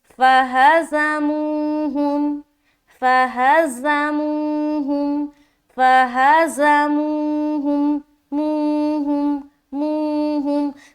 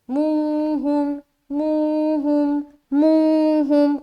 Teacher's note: صرف اور صرف بیچ میں جو منہ آ رہا ہے وہاں پر ہم واو مدہ کر رہے ہیں تو وہاں پر ہمیں ایک الف کی برابر کھینچنا ہے